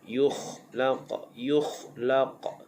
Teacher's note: Yukhlaq, kha makhrajnya di hujung kerongkong.